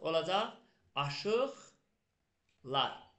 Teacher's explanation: Q samiti, samitlə başlayan şəkilsi artırdığıma görə necə tələffüz olundu? Kar. X kar samitinə çevrildi.